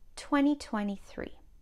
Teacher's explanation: when people say this number fast you often don't hear the second T listen 2023 sounds like I'm saying 20.